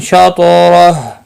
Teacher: تا مستعلیہ ہے، پر پڑا جائے گا، اس کے اوپر قلقلہ بھی ہوگا